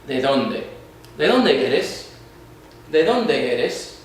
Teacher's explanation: in Spanish, when we say D's, we actually say them more like the TH of father than we do the D of dad. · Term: softer D